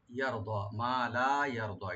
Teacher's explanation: রা ডিপ হবে আর দোয়াও ডিপ হবে, ডিপ করে একালে টানতে হবে, টেনে পড়তে হবে।